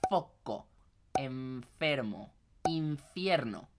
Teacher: Entonces es dientes superiores con labio inferior. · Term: Labio dental